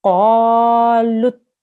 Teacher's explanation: Qaf, remember, is a thick sound. You have to make a round mouth when you say it